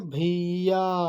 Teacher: मतलब एक लॉन्ग, मतलब खींच के बोल रहे हैं। ठीक है, वो 3 गुना आवाज़ निकल रही है। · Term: प्लुप्त स्वर